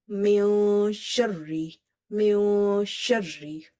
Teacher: Sound is going into the nose and tongue is suspended. It's floating inside the mouth. It's not touching anywhere. The moment you will touch your tongue to the upper palate, you will end up doing gunna. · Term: ikhfa